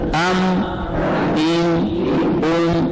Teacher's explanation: یہاں میم ساکن ہے, اس کے بعد کوئی حرف نہیں آیا, تو یہاں غنہ نہیں کریں گے. اور یہ جو ام کی تھوڑی آواز آتی ہے, یہ غنہ آنی ہے بغیر ارادہ کے.